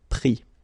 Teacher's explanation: Final S not pronounced